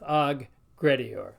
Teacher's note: Notice when we say aggressive, it's kind of one G sound, but in Latin we've got them both. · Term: two G's